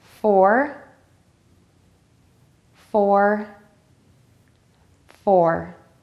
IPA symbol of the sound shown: fɔr